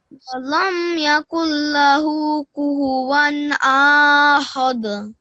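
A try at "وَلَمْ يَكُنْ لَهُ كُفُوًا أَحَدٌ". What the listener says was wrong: Now remember what I just said about this alif. You don't prolong this.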